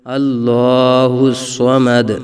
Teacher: وقف کی وجہ سے، تو دال ساکن میں قلقلہ خوب ظاہر کریں گے